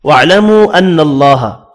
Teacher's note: وَاعْلَمُوا أَنَّ اللَّهَ، چھوٹی مد ہے، واو کے اوپر 3 الف کی مقدار میں کھینچ کر پڑھنے ہیں، نون مشدد پر غنہ کریں گے، اللہ کا نام زبر کی وجہ سے پر پڑھا جائے گا۔